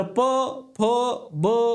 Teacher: खालचा आणि वरचं ओठ एकमेकांवर ठेवून या वर्णाचा आपल्याला उच्चार करावा लागतो. त्याला आपण ओष्ठ वर्ण असं म्हणत असतो.